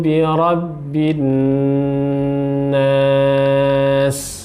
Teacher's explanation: nun tasydidnya didengungkan sepanjang 2 harokat